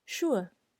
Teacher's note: the sound er here or if you know the linguistic term the schwa here is having the same tone as tone zero